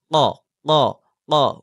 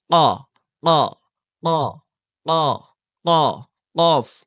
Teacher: জিহ্বার গোড়া তার বরাবর উপরের তালুর সঙ্গে লাগিয়ে উচ্চারিত হয় কফ